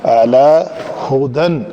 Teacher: تو اس کو اعلیٰ کریں گے تو وہ الف ہو جائے گا، اس کو اعلیٰ کرنا ہے، عین کی ادائیگی ہونی چاہیے۔ اعلیٰ لام جو ہے وہ پتلا رہے گا